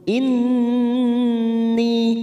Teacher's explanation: ghunah musyaddadah kita tekan tiga ketuk siap masuk P huruf nun inni ni kita panjangkan dua harakat · ni kita panjangkan dua harakat karena ada kasr bertemu Ya Sukun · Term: Mad Thobi'i